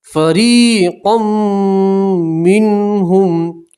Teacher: ابناءہم وَإِنَّ فَرِيقًا یا مدہ استیق الف کے برابر کھینچیں گے نون کے اوپر تشدید ہے تو نون میں گننا کریں گے اور تنوین کا میم کے اندر ادغام کریں گے اور گننا کریں گے